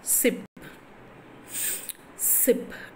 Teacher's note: air escapes through a narrow passage along the center of the tongue